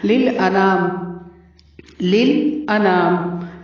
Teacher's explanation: للانام لل کو لمبا نہیں کرنا اور لل کو ہلانا بھی نہیں ہے، لل ایسے لمبا نہیں کیجیے گا.